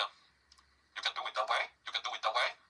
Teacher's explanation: falling 떨어졌다가 rising 올라가니까 올라가는 정도가 더 크게 느껴지겠죠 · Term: falling rising intonation